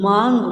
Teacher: माँ की जो थोड़ी ध्वनि है वो नाक से आती है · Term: अनुनासिक